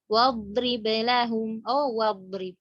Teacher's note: Ketika kita menaruh waw di situ dan kita membacanya hamzahnya tidak terbaca, itulah yang dinamakan dengan hamzah wasl